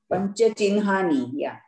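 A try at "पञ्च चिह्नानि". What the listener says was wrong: Not chinhani. Pancha chinnani. Hakara also becomes nakara. Hakara followed by this nakara. Also it is pronounced as nakara. Or nakara can be pronounced first even though it comes later. Hakara can be pronounced after that. Panchachinnani.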